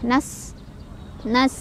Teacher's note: Nas, sinnya ada sifat hamas dan sofir. Hamis ada aliran angin, aliran udara keluar. Sofir ada desisan kayak suara ular ya.